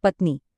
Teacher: सही उच्चारण में नी पर जोर दिया जाता है। ध्वनि लंबी खींचती है।